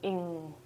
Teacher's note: It is voiceless, ing. Sorry, it is voiced. That means your throat will vibrate when you say it